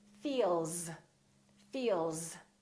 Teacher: few more voiced sounds feel o vibration in my vocal cords that's a voiced sound therefore the S sounds like zip